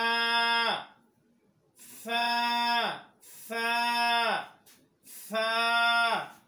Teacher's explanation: সা হরফ উচ্চারণ করার সময় জিহ্বার আগা উপরের দাঁতের আগার সঙ্গে লাগাইতে হবে।